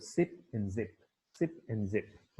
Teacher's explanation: Alveolar क्यों है, क्योंकि एल्वियोलर रिज के साथ आपकी टंग जो है वो टच करे। These are alveolar fricatives एंड their place is at the alveolar ridge. The air escapes through a narrow passage along the center of the tongue, and the sound is comparatively intense.